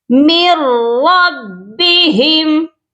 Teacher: بھی نون ساکن کے بعد لام اور را آتے ہیں تو ادغام صرف کیا جاتا ہے، یعنی کہ ملا کر پڑھا جاتا ہے لیکن غنہ نہیں کیا جاتا ، یہاں ہم نون کو بالکل بھی نہیں پڑھیں گے، من